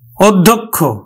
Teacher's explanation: এই ধ টা দুইবার উচ্চারিত না হয়ে ধ এর আগের যেই অল্পপ্রাণ সেটি সহ কিন্তু দুইবার উচ্চারিত হবে